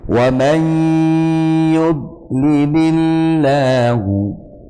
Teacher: Satunya wa may yudlilillahu, ada nun mati ketemu ya, dibaca idgham bihunna. Cara bacanya dengan memasukkan tanwin ataupun nun ke dalam ya disertai dengan hunna atau dengung